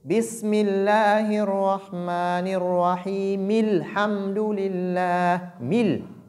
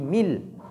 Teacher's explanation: nous devons non seulement lire le kasra qui est sous mim, mais aussi ignorer hamzatul wasli qui est au début de alhamdu. Cette hamza, comme on l'avait dit, elle est là pour nous aider à lire cette lettre lam qui porte soukoun.